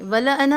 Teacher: الف کے فوراً بعد اگر حمزہ آئے، جیسا کہ یہاں آیا ہے، اس کو 4 to 5 کاؤنٹس کھینچ کر پڑھیں گے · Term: الف مدہ